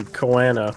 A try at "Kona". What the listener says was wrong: Kona. They just say Kona. Unless I'm missing the pronunciation of the first A, it sounds like they're just saying Kona.